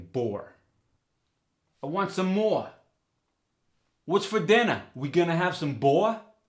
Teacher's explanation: the or sound goes to OU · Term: R drop